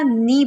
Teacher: نون کی زیر باریک ہوگی، نے نہیں پڑھنا، نی پڑھنا ہے